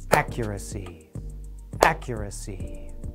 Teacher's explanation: accuracy has stress on the very beginning of the word. We can show that by clapping on the stressed part of the word.